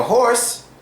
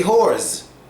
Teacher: the W is basically silent and the S becomes a hard Z